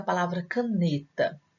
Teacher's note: Na palavra caneta, a sílaba tônica é a penúltima. Então, nós temos uma palavra paroxítona, quando a sílaba forte é a penúltima.